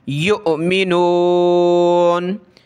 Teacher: حمزہ پہ جھٹکا دیں گے، حمزہ ساکنہ ہے